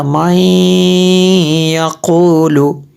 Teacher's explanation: نون کی آواز نہیں آئی تھی، غنہ ہوا تھا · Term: ادغام